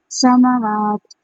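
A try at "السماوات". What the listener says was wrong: تھوڑی سی آپ کی سٹی کی وائس کی تھوڑی سی بس کمی ہے. تھوڑے سے آپ اس کو مشق کریے گا تو یہ بہتر ہو جائے گی. آپ ایک بار بولیے زا سین اور سواد. بولتے وقت ٹھیک ہے بس زا کی تھوڑی سی کم تھی.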